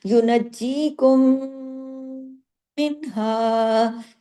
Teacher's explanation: بڑا اکمل غنہ، دیر تک آواز ناک میں چھپے گی ، ادغام ہو رہا ہے، ادغام شفوی ہو رہا ہے، میم